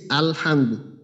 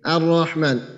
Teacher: আলিফেরও এখানে কিছু নেই আলিফের ব্যবহারটাও এখানে হইতেছে না আবার লামের ব্যবহারটাও হইতেছে না